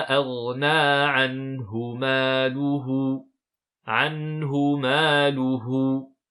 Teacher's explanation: On ne prolonge pas ici le ha de anhu puisque juste avant nous avons une lettre avec un soukoun.